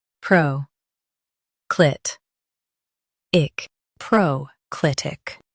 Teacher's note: Stress clit and keep pro light.